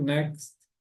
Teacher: Esse next aqui vocês podem falar com um sonzinho de T bem sutil, next, ou então pode tirá-lo totalmente aí na pronúncia, né?